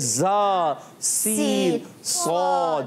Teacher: ज़बान की नोक बिल्कुल बारीक नोक आगे आती है और फिर अदा होते हैं। ज़बरदस्ती लगाएंगे तो ये हुरूफ ख़राब हो जाते हैं।